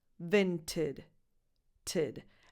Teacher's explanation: The first vowel is a lax I, as in the pronoun it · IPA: [ɪ]